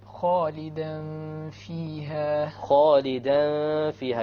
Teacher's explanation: You have a tanween followed by a fa. So this will be the ruling of ikhfa.